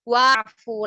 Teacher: Jika ada huruf waw yang diikuti hamzah wasal, maka qari membaca waw kemudian melanjutkan membaca fi'il setelahnya dan tidak membaca hamzah wasalnya